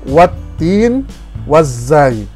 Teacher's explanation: Alif dan lam tidak disebut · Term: Idgham Syamsiah